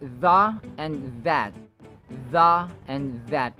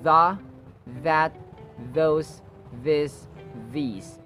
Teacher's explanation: Notice the sounds or the initial sounds have the voiced TH sound or the hardened TH sound, just like those, this, these.